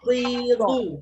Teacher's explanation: bunyi dot sebenarnya dari tepi lidah kena geraham atas, kiri atau kanan ikut selesa kita. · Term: huruf dad